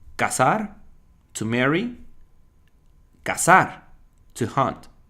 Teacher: in Mexico and in many other countries in Latin America, there is no difference at all. It sounds the same.